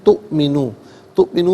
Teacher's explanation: تؤمنو میں حمزہ ساکن ہے، اسے جھٹکے کے ساتھ پڑھیں گے، تؤمنو نہیں، تؤمنو، لا تؤمنو۔